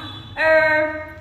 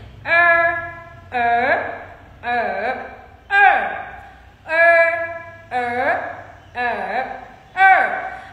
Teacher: Và đây là một âm cuốn lưỡi, vì thế các bạn sẽ cuốn lưỡi của mình lên nhé.